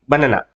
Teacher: దీనిలో ఈఏ వచ్చేసరికి బనానా అంటాం. ఈ నాకి పక్కన వచ్చేసరికి కొంచెం ఆ పలికాం కానీ ఇది స్కిప్ చేసినట్టే ఉంటుంది, పలికి పలకనట్టుగా వెళ్ళిపోతాం. ఇలాంటి ప్రదేశాల్లో ఉపయోగించే ఈ అ అనే శబ్దాన్ని శ్వా అని పిలుస్తాం.